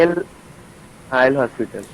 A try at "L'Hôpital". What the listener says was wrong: Particularly, that is not pronounced as L hospital, it is pronounced as L'Hôpital. Yeah, that is particularly a French word, and not it is called as Lee Hospital or L Hospital or something.